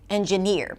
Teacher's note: In the word 'engineer' the primary stress is on the final syllable